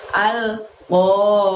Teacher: Ingat, oh di sana qaf fathah, jadi ucapkan atau bunyikan suara ko-nya dari pangkal lidah kita hingga menyentuh langit-langit.